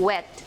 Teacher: The 23rd consonant is the semivowel W, as in wet. It is described as a voiced labiovelar semivowel or glides.